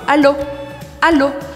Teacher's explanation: em francês, eu uso apenas a ponta da língua, fazendo ela encostar no céu da boca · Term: o L em francês